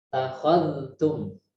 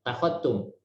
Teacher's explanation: Harus menampakkan huruf dalnya karena ini hanya berdekatan, tidak satu makhraj. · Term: idhar